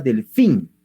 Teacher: es una palabra aguda porque la mayor fuerza de voz está en la última sílaba